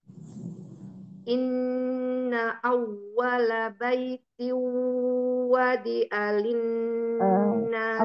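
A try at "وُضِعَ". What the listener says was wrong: Apa itu? Wudi'a. Wawunya Duma.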